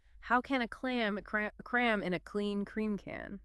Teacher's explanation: those are all stop consonants so it's a lot of starting and stopping of the air flow